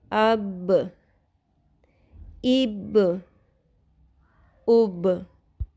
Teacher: با کا مخرج ہونٹوں کے تر حصے جب آپس میں مل کر جدا ہوتے ہیں تو با ادا ہوتا ہے۔